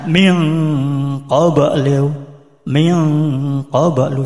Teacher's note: Sedangkan cara membacanya menjadi sengo atau eng.